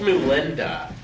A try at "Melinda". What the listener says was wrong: Melinda. Why'd you say it with the U? Melinda. Melinda.